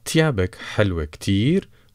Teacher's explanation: Kindly note the th sound here as the th in thank you. In dialect, they pronounce it ta for tango, simply because it's easier.